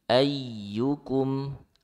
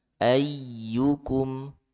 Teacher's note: Ya-nya tasdid. Ayyukum. Nah, dia agak dihentak.